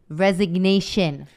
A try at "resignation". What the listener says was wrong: You said resignation. And I said there's a G in that word, resignation.